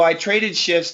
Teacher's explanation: if you do not pronounce the F it sounds like shits and that's not good we need to keep the F so